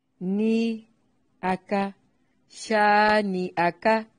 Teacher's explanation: کاف کو باریک پڑھیں گے، حمزہ کو تحقیق سے پڑھنا ہے، لمبا نہیں کرنا